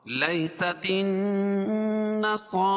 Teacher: صاد کو پور پڑھیں گے، کیوں؟ اس لیے کہ صاد حروف مستعلیہ میں سے ہے اور اس کے اوپر کھڑا زبر ہے، اور را کو بھی پور پڑھیں گے اور را کے اوپر بھی کھڑا زبر ہے۔ · نصارى نون مشدد ہے غنہ ہوگا